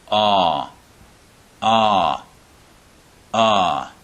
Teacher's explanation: of our mouth just as it does with ah ah ah the sound comes from a bit further back in the in the throat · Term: ah sound